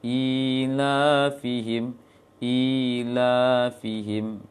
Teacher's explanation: Maka i-nya panjang. Ila fihim, sama panjangnya dengan la-nya.